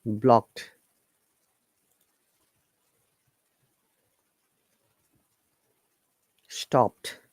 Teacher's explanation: though d is there but it sounds like t